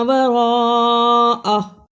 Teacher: را کو پر پڑھا، بڑی مد ادا کی